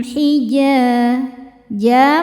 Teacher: mad thobi'i karena ada alif didahului fathah maka dibacanya panjang dua harakat